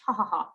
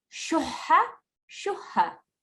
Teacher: the sound has to come slightly higher than your regular H sound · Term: sharp ha